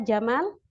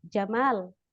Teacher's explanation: Jamal dibaca dengan mad, Jamal tanpa mad.